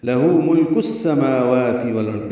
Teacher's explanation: لہو ملک السماوات والارض، لام کو باریک پڑھنا ہے، ہو الٹا پیش ہے، 2 حرکات لمبا کریں گے۔ ملک میں لام باریک ہے، لام ساکن اور اس پہ اظہار ہے، کاف باریک ہے اور اس کو سین سے ملانا ہے۔